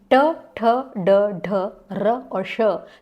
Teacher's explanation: इनका उच्चारण स्थान है मूर्धन्य